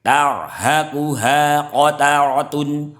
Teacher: Ini ada ro tafkim, ro tebal. Ro sukun didahului fathah. Tarhaquha qataratun, ro-nya juga tebal, tafkim